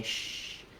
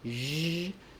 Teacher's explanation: the zh sound is just like the sh sound, except that my voice is on. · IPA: /ʒ/